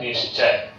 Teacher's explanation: विसर्ग के बाद जब च आता है तो विसर्ग बन जाता है स। तालव्य स बन जाता है।